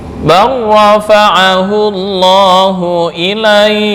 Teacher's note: Semua ulama qiraat sepakat ya untuk lam bertemu ra di sini dibaca idgham.